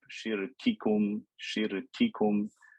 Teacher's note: take care of the sifa of shiddah, the abrupt sharp sound in the kaf and the ta